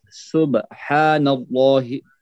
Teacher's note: لام پھر موٹا کہ جلالہ، لام جلالہ ہے